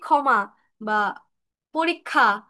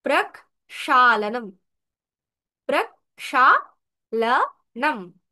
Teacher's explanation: ক্ষমা বা পরীক্ষা, এরকম করে বলি, কিন্তু সংস্কৃততে আমরা আলাদা আলাদা করে, মানে ক আর স আলাদা করে উচ্চারণ করব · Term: ক যোগ মূর্ধন্য স